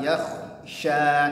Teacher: Mai, ya-nya tipis, kha-nya tebal, yakhsha. Ya, shinnya tipis lagi, tapi punya sifat tafasyi namanya.